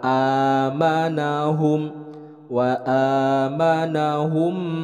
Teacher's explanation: Nah, di sini ada wa a. Ini adalah alif, itu keluarnya dari aqsal halqi, dari pangkal tenggorokan. Jadi dibacanya jelas, bukan wa atau wa tapi ini wa amanahum.